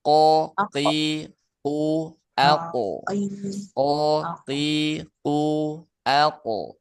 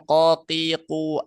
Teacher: huruf qof keluar dari pangkal lidah yang bertemu dengan langit-langit lunak